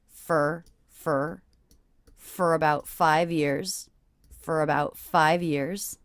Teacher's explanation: the words for and about, for about 5 years. I notice I'm reducing this to the schwa